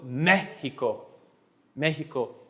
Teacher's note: How many syllables in Mexico? 3. Where am I putting my push? On the first.